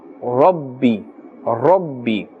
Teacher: The ra has a fatha and therefore it's pronounced with a full mouth.